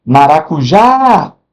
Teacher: é a sílaba mais forte, é a última da palavra. Então eu tenho uma palavra quando a sílaba tônica estiver na última, na última, na última parte da palavra, na última sílaba, eu tenho uma oxítona.